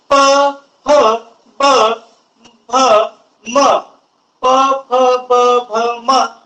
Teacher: त्यावेळेस ओठांचा वापर करावा लागत आहे. त्यामुळं याला ओष्ठ्य वर्ण असं म्हटल्या जाते